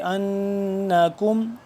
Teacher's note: حمزہ نون زبر ان نون زبر نا، اس پہ ہم غنہ کریں گے